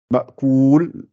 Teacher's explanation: on arrondit les lèvres et on les pousse vers l'avant pour que le ou soit bien, bien net et bien prononcé.